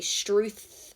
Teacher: we say struth with the th at the end um and it's not with the f sound